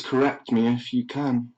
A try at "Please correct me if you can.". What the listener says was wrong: Please Please How do you get 2 fucking syllables out of the word can? Can. Please correct me if you can. Please correct me if you can.